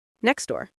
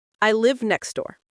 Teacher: If I say them carefully, I pronounce the T. But in fast English, I say next door. The T is gone completely. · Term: elision